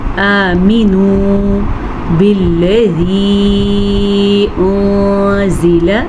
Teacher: آمینو بالذی انزل، نون ساکن کے بعد زا ہے اور زا حروف اخفا میں سے ہے تو ہم نون ساکن کو چھپا کے پڑھیں گے، غنّے کے ساتھ پڑھیں گے، اسے اخفا کا قاعدہ کہتے ہیں